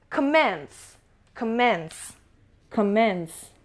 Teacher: Commence stress is on the second syllable.